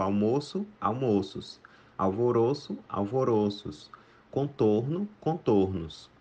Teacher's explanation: palavras que têm o timbre fechado no singular e permanece fechado no plural